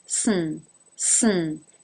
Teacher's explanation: soon soon is basically an S straight into the N soon soon there is a little bit of a schwa thrown